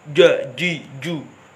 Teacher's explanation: Sifatnya jahar syidah, nafas suara tertahan. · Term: jim